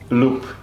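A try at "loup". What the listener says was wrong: We don't say the P, we just say loo.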